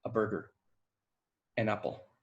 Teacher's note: We don't usually say a or an, it's usually a burger, an apple. It's really reduced, it's really short. That schwa is really short.